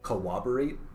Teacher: I will tell you, in America, I don't know about in England, but here in America, this is often pronounced corroborate, like as if it has a W in it.